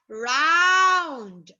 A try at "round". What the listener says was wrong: Oh, pronounce letter N and letter D.